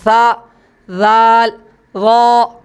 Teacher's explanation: ہلکی سی زبان دونوں دانتوں کے کناروں پر لگتی ہے۔